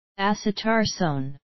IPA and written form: æsə'tɑ:soʊn (acetarsone)